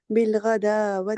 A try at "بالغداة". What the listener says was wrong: اچھا یہاں پر بھی دو حرکت کا اسٹریچ ہوگا. اچھا واو نہیں بولیں گے.